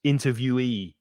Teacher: So the ye at the end is stressed